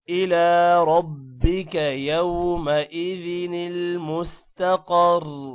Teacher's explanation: إلى لام کو لمبا کریں گے کھڑی زبر کی وجہ سے